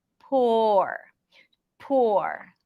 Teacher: Before the R, the lips are a bit more rounded.